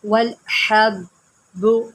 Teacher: حا کو حلق سے نکالیں